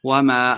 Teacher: وَمَا الف مد ہے تو 2 حرکات لمبا کر کے پڑھنا ہے